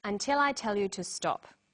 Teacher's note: Did you hear the falling tone at the end?